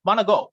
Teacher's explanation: Want to go becomes wanna go, or you say do not becomes don't. So we omit sounds or syllables. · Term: elision